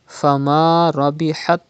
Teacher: Fama Rabihat. Ra has Zabar on it. You have to read with thicker voice.